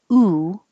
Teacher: where you have rounded lips ooh and your tongue is rather high in the middle